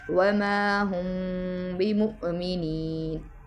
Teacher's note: میم کو اس کے مخرج میں چھپا کے پڑھیں گے، اسے اخفاء شفوی کہتے ہیں۔